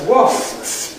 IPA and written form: wɒsps (wasps)